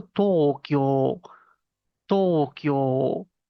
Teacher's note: la U pareciera igual que se apaga y ese tiempo lo cubre la O.